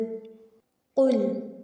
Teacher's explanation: قل، قوف کو موٹا پڑھیں گے، ٹھیک ہے، اس کو کل نہیں پڑھنا، قوف کو باریک نہیں پڑھیں گے، موٹا پڑھیں گے